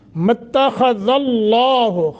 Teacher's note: मत्तख़ज़ल्लाहु खा को मोटा, दाल का मखरज सही अदा होना है। लफ्ज़ अल्लाह को तफ़ख़ीम के साथ पढ़ेंगे, मोटा करके।